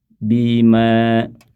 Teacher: maka bunyi panjangnya, bunyi bacaan bima menjadi 2 harokat saja. Bima, baru ketika disambung baru kembali dibaca 4 harokat.